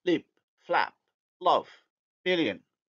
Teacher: The light L is alveolar, hence plus anterior